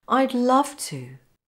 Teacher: Notice to isn't weak, it's strong.